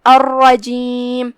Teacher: کلمت الرجیم میں یہاں را پہ تشدید ہے، دو حرف کے برابر ہم را کو پڑھیں گے جو کہ اس پہ تشدید زبر ہے تو را کا حکم ہے تفخیم، ہم اسے بھاری آواز میں پڑھیں گے